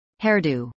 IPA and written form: ˈhɛrˌduː (hairdo)